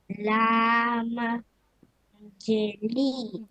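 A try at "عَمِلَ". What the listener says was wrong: লামে জের নাই তো। লামে কি আছে দেখেন? লাম জবর লা।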